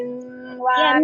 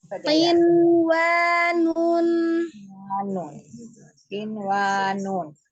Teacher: nun sukun ketemu dengan wawnya kan dia harusnya idgham, tapi pengecualian dikatakan wanun ini dia dibacanya izhar. Ya, izhar itu artinya jelas, tetapi dilihat dari sifat nunnya itu yang dia mengalir sebagian ya.